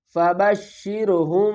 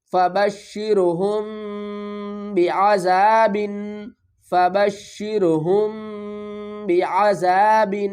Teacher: یہاں پر بھی ہم میم کی آواز کو چھپا کر پڑھ رہے ہیں، آگے با آ رہا ہے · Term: اخفاء شفوی